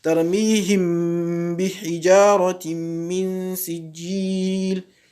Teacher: On fait une ghunna de deux temps, on pose légèrement les lèvres, ensuite on passe sur la lettre ba dans la lecture. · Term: al-ikhfa